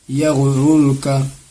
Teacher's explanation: رائے ساکنہ سے پہلے پیش ہے اور اس راہ پر بھی پیش ہے، اسی لیے دونوں راہ کو پر کر کے پڑھیں گے